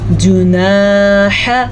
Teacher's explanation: اس سے زیادہ نہ ح کو لمبا کر سکتے ہیں نہ جیم کو، لیکن الف مدہ کو ہم کھینچ کے پڑھیں گے